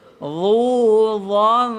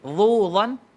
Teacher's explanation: tanwin bertemu dengan dha, kita kena dengung dia dengung yang tebal. Pasal apa? Pasal dha tu tebal.